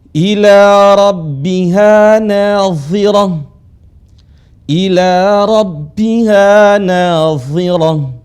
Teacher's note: Dha-nya dibaca tebal sekalipun kasrah.